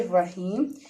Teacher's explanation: یا سے پیچھے زیر ہے، تو اس کا مطلب ہے یہ مد اصلی ہے، اور اس کو ایک الف کے برابر کھینچ کے پڑھیں گے